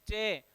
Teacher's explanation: चे बोलते हैं तो जिह्वा का आगे का भाग ही तालु को स्पर्श कर रहा है